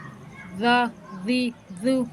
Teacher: دو، دو، اب دال کو نرمی سے پڑھیں گے، ٹھیک ہے، دال میں سختی کی بھی آواز نہیں آنی چاہیے، بالکل نرمی سے پڑھیں گے